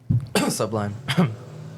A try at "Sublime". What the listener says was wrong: No, but you said it like sublime. like it's two words.